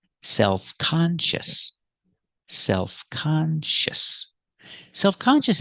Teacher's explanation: we're going to keep the stress on con